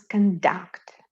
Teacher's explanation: when we pronounce conduct with the accent on the last syllable it is a verb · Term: stress placement